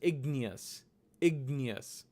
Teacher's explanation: Most Sanskrit teachers will pronounce this letter as gnya. It's almost like a very light ga, but it's not produced by the throat. It's produced by the palate with a nya sound to get gnya